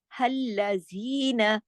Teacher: زی 2 حرکات کھینچے گا. نون زبر نا 2 حرکات نہیں کھینچے گا، 1 حرکت.